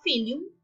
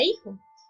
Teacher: Aquí lo que sucede es una aspiración. La F inicial latina antevocal pasa a ser una H. Luego, en castellano, después de ser una H, pues pasa a ser aspirada, quedando únicamente la grafía.